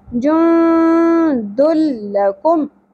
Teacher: جند لکم یہاں پر آپ دیکھیے نون ساکن کے بعد حروف اخفا میں سے دال آیا تو ہم نے اخفا مع الغنہ کیا، لیکن جب تنوین آ گئی ہمارے پاس تنوین کو لام سے ملانا ہے، ادغام کرنا ہے اور غنہ نہیں کرنا ہے بغیر غنہ